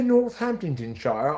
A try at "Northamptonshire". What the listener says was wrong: I think there's no H. I think it's Northam. You have to mumble a lot, too.